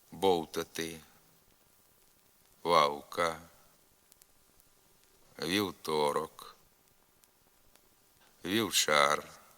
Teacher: нескладотворчий голосний у у середині слова